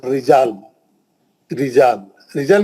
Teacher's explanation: रा पे जेर है, पतला पड़ी है, लाजमी बात है, क्योंकि जेर का आवाज नीचे जाता, जेर का आवाज नीचे जाता, नीचे गया तो उठेगा कैसा आवाज?